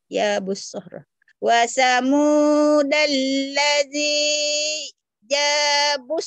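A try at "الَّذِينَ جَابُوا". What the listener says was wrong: Nanya ketinggalan. Wa samudal ladzina, nanya ketinggalan. Nangis nanti, jangan tinggalin.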